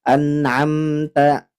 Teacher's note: hams di sini bukan mengalir udara tapi percikan udara atau percikan nafas jadi cuma karena kalah sama syidah tertahan suaranya anamta jadi tanya